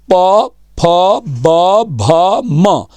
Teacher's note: होंठों पे देखेंगे प फ ब भ म, याद करो ये हमारे होंठों से बोले जाते हैं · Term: ओष्ठ